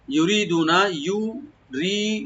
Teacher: রাটাকে পাতলা করে একালিফ টানবেন, দু একালিফ টানবেন, নুনে কোনো টান নাই